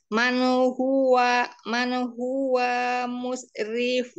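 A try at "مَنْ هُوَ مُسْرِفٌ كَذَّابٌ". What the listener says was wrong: Wah, ini jangan panjang, langsung ke mim.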